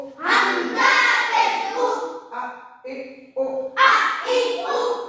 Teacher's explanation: হামজা হলকের শুরু হতে শক্ত ভাবে আদায় হবে। হামজা জবর আ, হামজা জের ই, হামজা পেশ উ, আ ই উ।